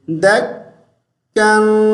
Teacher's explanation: دال کو کاف کے ساتھ ملائیں گے تو تھوڑی دیر کے لیے رک جائیں گے